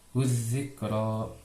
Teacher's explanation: Huzikro itu hukum tajwidnya idgham syamsiyah karena huruf zal bertasydid, ada sebelumnya ada huruf alif lam itu tidak dibaca, jadi harus langsung ke huruf zalnya.